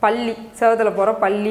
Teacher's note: பல்லுக்கு பின்னாடி ஃபஸ்ட்டு என்ன பண்ணுறோம், அந்த நாக்கு வந்து படும், அதுதான் ஆல்வியோலர் ரிட்ஜ்